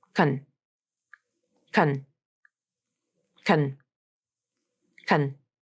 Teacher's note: It's not pronounced as con or cone, which is how I hear many non-native speakers pronounce this type of syllable. It's a short, reduced syllable that uses the schwa sound, or maybe no vowel at all.